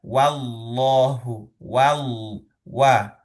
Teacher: Lafaz jalalah yang lafaz jalalah itu tebal karena pengaruh fathah dari huruf sebelumnya yaitu huruf wawu. Huruf wau fathah sendiri tipis tetapi lafaz jalannya tebal. Nah, di sini juga kita ee perhatikan wallahu wal wa di situ wa ya bukan wo wa gitu kan ya.